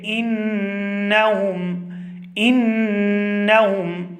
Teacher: اور اس کی آواز ہم ناک کے بانسے سے ادا کریں گے، اور اس کی جو مقدار ہے وہ 1 الف کے برابر ہے، یعنی کہ 2 سے 3 سیکنڈ ہم اس کو کھینچ کر ادا کریں گے اور اس کو پڑھیں گے، انہم، انہم۔ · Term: غنہ زمانی